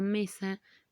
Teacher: aquí podríamos decir que la palabra mesa tiene acento en el penúltimo lugar · la palabra mesa tiene acento en el penúltimo lugar, antes del último lugar. Cuando el acento está antes del último lugar, le vamos a llamar que es una palabra grave.